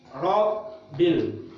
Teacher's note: Rob tahan 2 harokat, baru bunyi bil. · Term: huruf bertasydid